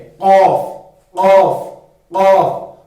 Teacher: زبان کی جڑ سے اس کو ادا کرنا ہے اور موٹا بھی پڑھنا ہے